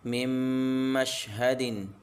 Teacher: یا نون سائلنٹ ہو جائے گا، میم ساکن، نون ساکن کے بعد حروف یرملون میں سے میم آ رہا ہے، یہاں پر ادغام ہوگا۔ نون کو رواں میں نہیں پڑھیں گے، میم کو اس میم سے ملا کر پڑھیں گے